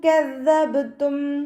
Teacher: ബ കൽക്കല ലെറ്റർ ആയതുകൊണ്ട് ഫുൾ സുക്കൂന് കൊടുത്തിട്ട് ഉച്ചരിക്കുക